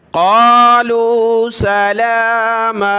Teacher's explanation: لام کو ایک الف کی مقدار کھینچیں گے، کھڑا زبر ہے، میم کو بھی کھینچیں گے کیونکہ دو زبر کی تنوین پر ہم نے الف کے ساتھ رکنا ہوتا ہے۔